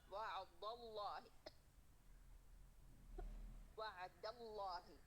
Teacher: अब दाल दाल बारीक है तो दाल मुतअस्सिर नहीं होनी चाहिए लफ्ज़ जलाला की वजह से